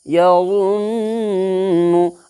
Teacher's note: آپ کو بتایا تھا ناک کے بانسا کے اندر میں آواز کو چھپا کر کے، نون کی آواز کو چھپا کر کے ایک الف کے برابر گن پڑھیں گے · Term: گنہ